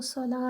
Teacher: सलात में जब रुकते हैं तो ये जो ताई मरबूता है ये हा में बदल जाती है · جب رکتے ہیں تو یہ جو تائے مربوطہ ہے یہ ہا میں بدل جاتی ہے ، اس کو صلاۃ کر کے نہیں رکھیں گے، اس کو